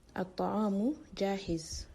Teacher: The Taah here is an example of a solar letter. It's carrying a shaddah, and also the Laam before it is not pronounced.